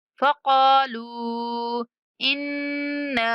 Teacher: نون پر غنہ کرتے ہوئے 3 سیکنڈ تک کھینچنا ہے